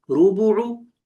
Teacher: تو پیش کو، سیدھی پیش کو کھینچتے نہیں ہے